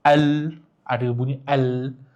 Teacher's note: qamariyah kita kena jelas kalau bunyi lam tu.